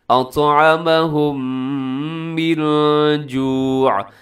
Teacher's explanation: اور پھر تیسری مثال میں دیکھیے گا، جیسے لفظ ہے اطعمہم، یہ دیکھیے گا، ہاں میم ساکن کے بعد میم ادغام غنے کے ساتھ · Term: ادغام شفوی